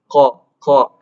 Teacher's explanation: untuk huruf qaf itu pangkal lidah yang bertemu dengan langit-langit lunak